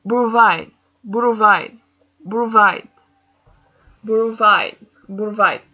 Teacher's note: I feel the stress in the ending, so I add it with here.